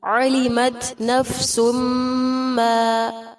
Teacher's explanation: تنوین کے بعد میم ہے ادغام کیا جائے گا